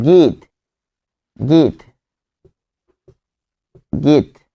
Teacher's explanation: যখন বলছেন গীত, তখন কিন্তু আপনি এখানে ত থেমে যাচ্ছেন, গীত, কিন্তু গীত থেকে উচ্চারণ হবে গীত, গীত।